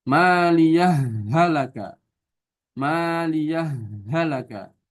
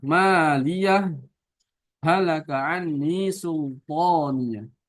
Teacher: diidghamkan hanya ya tanpa sakta